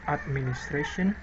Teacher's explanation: So, for example, when the word administration is said in isolation, or the end of the sentence syllable of ra is pronounced with greater force than syllable at, that is transcribed as administration. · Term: primary stress